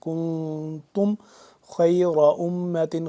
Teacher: اس سے پہلے میں بتا دوں یہاں پہ ہم نے کیا ہے, یہاں پہ ہم نے کاف نون پیشکون یہاں پہ ہم نے اخفا کرنا تھا, اخفا کیا ہے ناک کے اندر لے جا کر پڑھنا